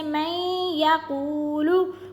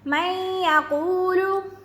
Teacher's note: یا زبر یا میں یا قاف پیش وقو میں یا قو لام پیش لو میں یا قولو. یہاں پر یا کھینچیں گے, میں یا پر ہوگا غنہ. اب جیسے کہ ہم نے بتایا تھا کہ اگر واو مشدد یا مشدد پر اگر غنہ نہیں ہو تو وہاں پر تو سختی ہوتی ہے, لیکن کیونکہ اگر یہاں پر غنہ آ گیا ہے یا مشدد پر تو پھر یہاں پر سختی نہیں, غنہ پڑھا جائے گا.